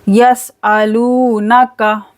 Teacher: सीन में सीटी आएगी, लू को खींचना है, लूनका।